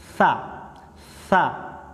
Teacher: Huruf sa makhrajnya adalah zuhru torfil lisani wa atrafus sanayal ulya. Punggung ujung lidah dan ujung dua gigi seri yang atas. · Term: huruf Tsa